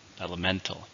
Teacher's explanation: 4, stresses on the third syllable.